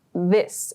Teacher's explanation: the word this, we use a voiced TH sound to produce that